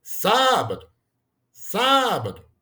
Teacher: você percebe que a gente tá chamando a primeira sílaba né a antepenúltima no caso é a mais forte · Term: proparoxítona